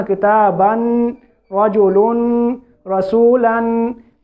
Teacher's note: जिस लफ्ज़ के ऊपर तनवीन हो उसको मुनव्वन कहते हैं। तनवीन के आखिर में नून साकिन की आवाज़ होती है, तनवीन के आखिर में गुन्ना नहीं होता। · ये आखिर में नून साकिन की आवाज़ आ रही है। तो नून साकिन की आवाज़ को ज़्यादा नहीं बढ़ाना कि वो गुन्ना हो जाए।